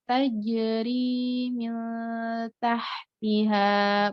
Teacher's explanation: Jim yang sukun dia qalqalah. Jadi tajri pantul ya. Qalqalah itu pantul.